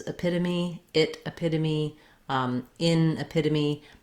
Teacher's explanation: the word epitome has stress on the second syllable, pit, and that means that the letter E will say a reduced vowel in this word.